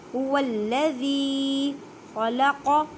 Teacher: زال کو نرمی سے ادا کریں کیونکہ یہ نرم حروف ہے، اور زال کو ایک الف کی مقدار میں کھینچ کر پڑھیں کیونکہ یا ساکن سے پہلے زیر آ گئی ہے۔ والذی خلق، خا کو حلق کے اوپر والے حصے سے ادا کریں۔ قاف کو ادا کرتے وقت خیال رکھیں کہ کاف کی آواز نہ آئے کیونکہ یہ حروف مستعلیہ یعنی موٹے حروف میں سے ہے۔